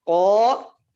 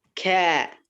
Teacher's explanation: Qaf kaf dikeluar dari paling dalam atau bagian dalam lidah sama langit-langit yang di tempat yang berdaging sama bertulang bertemu.